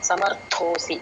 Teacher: అక్కడ థ అండి మహాప్రాణ సమర్థో ర కింద థ వత్తు అన్నమాట సమర్థోసి మత్కర్మ పరమోభవ భవ మహాప్రాణ